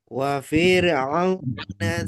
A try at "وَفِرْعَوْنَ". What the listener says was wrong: Fi-nya jangan panjang, langsung ke ro. Wafir, jangan wafi, jangan wafir. Wa fir'auna.